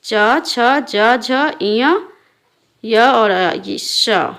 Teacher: जिन व्यंजन को उच्चारित करने के लिए जीभ के पिछले भाग को तालु से टकराना पड़ता है उसे तालव्य व्यंजन कहते हैं।